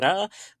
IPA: ɾ